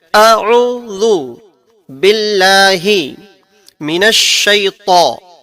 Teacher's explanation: عین کی جو آواز ہے وہ ہماری درمیانی حلق سے نکلتی ہے, اور حمزہ کی جو آواز ہے وہ ہمارے شروع حلق سے نکلتی ہے.